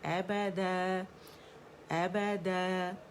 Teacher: الف مدہ ان 2 کاؤنٹس ہم اسے کھینچیں گے. ابدا، اور آواز اوپر جائے گی، د کر کے امالا کر کے نہیں پڑھیں گے. ابدا ابدا، آواز اوپر جانی چاہیے کیونکہ اسٹریچنگ لیٹر جو ہے الف ہے اوپر کی طرف اس کی آواز کو کھینچ رہا ہے، ٹھیک ہے.